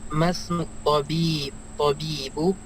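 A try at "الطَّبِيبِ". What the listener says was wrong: Tobibi, kasrah. Mudhaf ilaih ya, dia kasrah.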